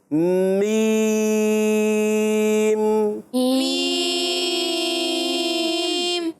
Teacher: درمیان میں جب آپ مد کر رہے ہوتے ہیں نا تو آواز ناک میں نہ جائے